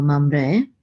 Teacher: So we're going to put the accent on the last syllable